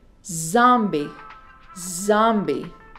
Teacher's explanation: la distingues porque suena como una abejita tiene una vibración muy pequeñita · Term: la z